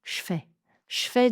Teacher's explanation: Souvent à l'oral, on ne va pas dire je fais, on enlèvera le premier e. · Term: la réduction du E